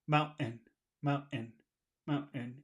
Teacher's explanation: there is a sound but it's not t it's like a little cough mountain mountain mountain it's a little weird sound Mountain it's a